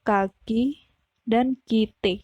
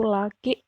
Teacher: Jadi, ke dan ek merupakan alofon dari fonem yang sama yaitu fonem ke.